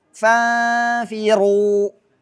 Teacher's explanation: Fa tidak boleh tebal. Harus dibaca tipis dengungnya.